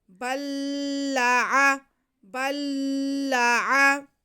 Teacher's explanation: हम बा को लाम के साथ, मुशद्दद लाम के साथ मिला लेंगे और पहला लाम जो है वो दूसरे लाम में मुदगम कर देंगे। बल्ला, बल्ला, पहला लाम साकिन है और दूसरा मुशद्दद है, तो दो लाम साकिन नहीं पढ़े जा सकते, इसलिए दूसरे लाम पे शद है, तो बा को हम दूसरे लाम के साथ ही मिला लेंगे।